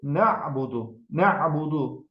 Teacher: A hərfi boğazın ortasından çıxan səsdir. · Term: Ayın hərfi